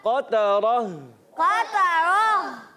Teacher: اس کو ہونٹ گول کر کے ادا نہیں کریں گے کیونکہ یہاں پر زبر ہے۔ پیش ہوتا تو ہونٹوں کی گولائی آتی، جی ہاں تو زبر والے کو بغیر ہونٹوں کو گول کی ادا کریں گے، اور را پر زبر آنے کی وجہ سے را پر ہو جائے گا۔